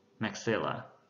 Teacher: Ở danh từ của chữ hàm trên thì trọng âm rơi vào âm thứ hai